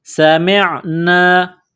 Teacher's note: سین میں سیٹی کی آواز پیدا کرنی ہے، سین کو باریک کرنا ہے، میم کو عین کے ساتھ ملانا ہے، سمعنا۔